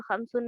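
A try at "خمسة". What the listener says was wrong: देखें आप खमसुन नहीं, खमसा खमसा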